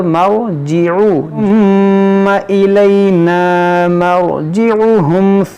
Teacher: را ساکن سے پہلے زبر ہے تو اس کو ہم موٹا پڑھیں گے